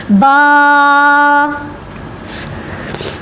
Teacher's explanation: با دونوں ہونٹوں کو آپس میں ملانے سے ادا ہوتا ہے